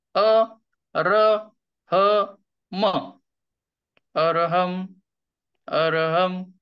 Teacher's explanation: म चा उच्चार करताना दोन्ही ओठ मिटलेले असतील